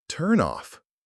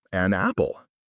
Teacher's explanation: The consonant sound from the end of the first word jumps over to the start of the second word.